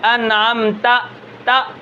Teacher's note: اس کے بعد اس کے اندر شدت ہے، انعمت، تا، تا کی آواز کے اندر شدت ہوگی، نرمی نہیں ہوگی